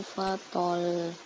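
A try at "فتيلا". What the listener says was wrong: Fatal gitu. Fatal. Jangan ditahan. Pendek. Fatal.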